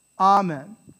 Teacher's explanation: In Latin, the word is pronounced amen, amen, right? And the stress is on the ah, right? Not the men, amen.